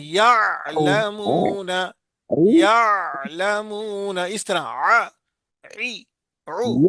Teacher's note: عی عو، گلے کے بیچ سے نکالنا ہے، یعلمون. گلے کے بیچ سے نکالنا ہے، وسط آ الحلق سے نکالنا. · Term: عین کی آواز